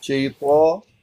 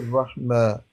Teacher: شیطان کو تو آپ نے مفخم پڑھنا تھا، پھر رحمہ اس کو باریک پڑھنا